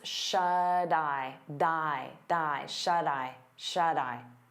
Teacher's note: we turn that T into a soft D because it's between vowels, and you'll hear it on both words.